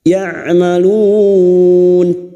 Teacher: Ya'malun bertemunya mat dengan huruf hidup yang dibaca waqaf mat arid li sukun empat harokat kita panjangkan